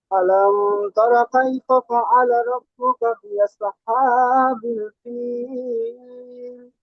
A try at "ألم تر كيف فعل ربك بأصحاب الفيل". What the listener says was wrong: আলাম বলে একটু মিমে গুন্না হয়ে যাচ্ছে। মিম সাকিনের পরে বা মিম ছাড়া অন্য তা এসেছে, তাই মিমকে বিনা গুন্নায় মিলিয়ে পড়তে হবে।